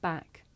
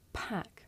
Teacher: With the voiceless sound, there's a big puff of air. You can feel it with your hands.